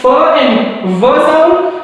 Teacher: so we bite down our lip so the place of articulation is same